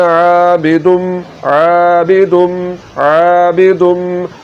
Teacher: حلق کے درمیان والے حصے سے آواز کو نکالتے ہوئے پڑھنا ہے